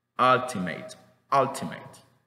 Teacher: es una chua fuerte la pronunciación es igual con la boca relajada y la lengua queda como en el centro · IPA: /ʌ/